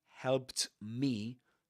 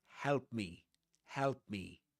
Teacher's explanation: And if right after it comes another consonant, like in this case, m, then you will have to drop, the consonant in the middle, the t, and say instead of helped me, help me, help me.